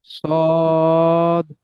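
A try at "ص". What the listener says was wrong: এখানে তিনালি আহ, সব কটা একই টান হয়ে যাচ্ছে, হ্যাঁ। যা যা একালি পরিমাণ টান আছে, সিন তিনালি পরিমাণ টান আছে, দেখছেন নিচে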